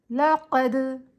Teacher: جو قلقلہ ہے وہ لفظ کے آخر میں آ رہا ہے حروف قلقلہ، تو قلقلہ کبریٰ بنے گا